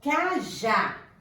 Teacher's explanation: A sílaba tônica é o já, né? A última sílaba. Ela é terminada em A, então eu acentuo cajá.